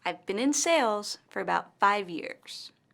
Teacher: longer and louder i've been in sales for about five years in this sentence the word sales and five years are stressed